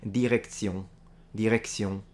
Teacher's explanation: I would close the O a little more and do a more nasalized N.